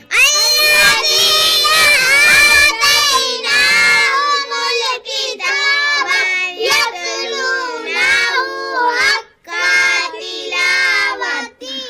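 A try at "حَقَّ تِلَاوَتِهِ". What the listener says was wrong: حق کو لمبا نہیں کرنا، حق تلاوتہ، قاف کو بالکل کھینچ کے نہیں پڑھنا، حق تلاوتی،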